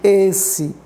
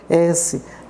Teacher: eu vou pronunciar fechado esse E, esse. Se eu pensar no nome da letra S, eu vou dizer, pronunciar aberto, S.